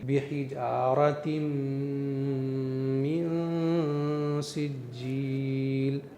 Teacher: اگر میں ان تینوں چیزوں کا خیال کرتے ہوئے یعنی اخفا کرتے ہوئے نون کو پڑھوں تو آواز ہوگی بحجارۃ من سجیل، اور نون پر اخفا نہ کروں یعنی ان تینوں چیزوں کا خیال نہ رکھوں تو آواز ہوگی بحجارۃ من سجیل۔ اخفا میں اس نون کی آواز کو صاف صاف مخرج سے ادا نہیں کرتے ہیں بلکہ نون کو ناک سے ادا کرتے ہیں